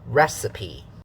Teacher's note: Syllable 3 is also unstressed. So 3 parts: stressed, unstressed, unstressed, strong, weak, weak.